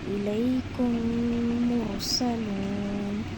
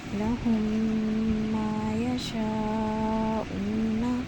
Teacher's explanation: میم ساکن کے فوراً بعد ہی میم آ رہا ہو تو میم کو میم سے ملا کر غنّہ کے ساتھ پڑھا جائے گا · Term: ادغام شفوی